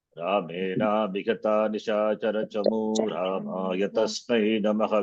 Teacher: Visarga need not be pronounced because it is dropped.